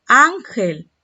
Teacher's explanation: ¿Dónde está la mayor intensidad? ¿Dónde está el acento? En la sílaba an, la penúltima. Entonces es una palabra grave.